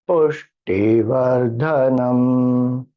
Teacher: Pu goes up, T goes down, Dha goes up.